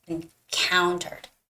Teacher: So the stress goes on the second syllable, encountered.